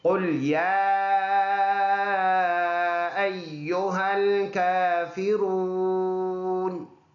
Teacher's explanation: کاف کے اوپر کڑی زبر، ایک الف کی مقدار لمبا کر کے پڑھنا ہے۔